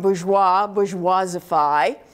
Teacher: if I will take a monosyllabic base um pure purify or an iambic base that's unstressed stressed